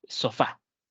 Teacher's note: Otra podría ser sofá, tiene dos sílabas, fa. Y la mayor fuerza de voz recae en la última sílaba. Por lo tanto, va a ser una palabra aguda.